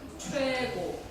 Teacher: 입을 조금만 오므렸다가 옆으로 딱 벌리는 그 발음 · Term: 이중모음